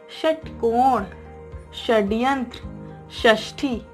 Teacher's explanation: देखिए जब आप ये शब्द बोलते हैं षटकोण, तो कोई भी कहीं कुछ स्पर्श नहीं होता है, मूर्धा से आवाज आती है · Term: मूर्धन्य स